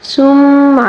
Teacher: ثم یہاں پر میم مشدد کا غنہ ہے